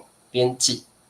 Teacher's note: light▁tone▁编辑，不过不是4声